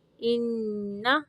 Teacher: نون مشدد کا غنہ ہوگا